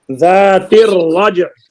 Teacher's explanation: را بھی حروف شمسی میں سے ہے، لام نہیں پڑی جائے گی، ادغام ہوگا